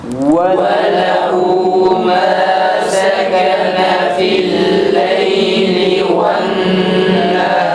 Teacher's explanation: Nehar kelimesindeki ra'nın kalın olduğu tam net bir şekilde belli olması gerekir.